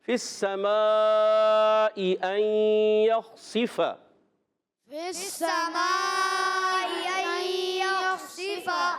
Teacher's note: اب دونوں حمزہ کو خوب واضح کیا، ظاہر کیا، تحقیق سے پڑھا